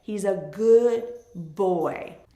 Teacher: we naturally end up dropping that first consonant, the D, because it's easier to go from the in good to the B sound in boy.